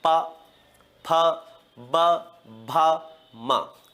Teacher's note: ओट कहते हैं होठों को इन्हें कहां से बोला जाता है ओट से या होठों से बोला जाता है